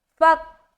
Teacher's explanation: ایسا نہیں پڑھنا، کاف میں قلقلہ نہیں ہونا چاہیے، فا کو جب کاف سے ملائیں گے آواز اسٹک ہوگی